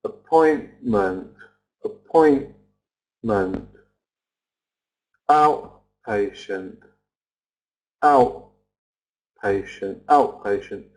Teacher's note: can you hear something I'm not pronouncing the T